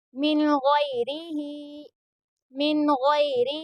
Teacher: یہاں پر یا لین ہو رہا ہے کیونکہ یا ساکن سے پہلے غین کے اوپر زبر ہے اس لیے یہاں پر یا لین ہو رہا ہے اور غین کو پر یعنی موٹا پڑھیں گے کیونکہ حروف مستعلیہ کے حرفوں میں سے بھی ہے غین اور یہاں پر را کے نیچے زیر ہے اس لیے یہاں پر را کو باریک پڑھیں گے. · ہا کو بھی تھوڑا کھینچ کر پڑھیں گے کیونکہ ہا کے نیچے کھڑا زیر ہے